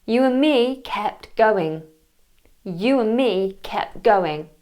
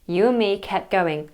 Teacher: I've missed out the D in and